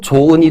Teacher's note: 조은이라고 할 때 발음으로 조은이 되는 거니까 히읗이 발음되지 않는 경우죠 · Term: 히읗 탈락